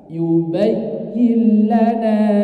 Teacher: Ya bertasdid itu memiliki hukum naber. Jadi diingat-ingat ya, kalau ya bertasdid itu memiliki hukum naber. Ada penekanan lebih pada huruf ya-nya.